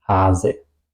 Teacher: Y una sola S, la vocal larga y la S corta